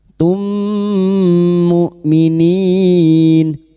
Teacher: memasukkan atau mentasdidkan dua mim masuk pada huruf mim berikutnya disertai mendengung selama tiga harakat · hamzah sifatnya jahar dan siddah, tertahannya nafas dan suara. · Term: idgham mimi, hamzah sukun